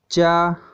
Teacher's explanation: तालव्य से बोले जाते हैं, तालु से बोले जाते हैं